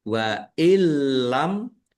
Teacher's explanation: Nun fathah alif mat tobi'i, panjang 2 harokat. Wa illam, nun sukun bertemu dengan huruf lam, bacaan idgham bila gunnah, masuk dengan tidak mendengung, yaitu langsung masuk ke huruf lam, nun sukunnya tidak dibaca, tetapi tidak mendengung.